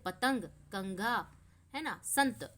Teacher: अनुस्वार का उच्चारण नाक से होता है, जैसे पतंग, कंघा, है ना, संत आदि।